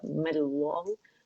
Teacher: कर रहे हैं, हमज़तुल वसल रवानी में गिर जाती है, तो मीम का जो फतहा है ज़बर है वो इसमें जलाला से मिलेगा, मल्लाहु मोटा पड़ा जाएगा